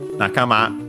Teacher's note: Nakama, accent on the last syllable